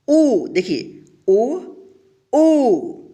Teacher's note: बड़ी ऊ, इसके उच्चारण में थोड़ा ज़्यादा समय लगेगा छोटी ऊ से